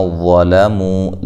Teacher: ذی یا مدہ ہے، نون کو لمبا نہیں کرنا۔ ظلموا، لام کو باریک پڑھنا ہے، وا کو موٹا، مو وا مدہ ہے۔